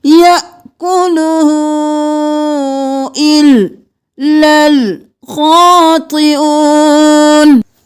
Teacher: ہو کو ہم نے 4 الف کے برابر کھینچنا ہے، 3 الف کے برابر اس مد کو اور 1 الف کے برابر الٹا پیش کو